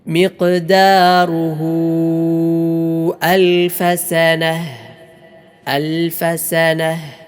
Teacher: ഇവിടെ മദ്ദിയായ വാവിന് ശേഷം ഹംസ വന്നു. അതിനാൽ നന്നായി മദ്ദ് ചെയ്യുക, നീട്ടി ഓതുക.